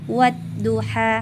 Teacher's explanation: ada huruf ha berharakat fathah bertemu dengan huruf huruf alif ya cara membacanya dipanjangkan sebanyak dua harakat atau satu Alif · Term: mad thi'i